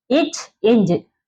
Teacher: நாவுடைய இடைப்பகுதி வந்து நடு அண்ணத்தின் இடைப்பகுதியை பொருந்துவதால் பிறக்கின்றது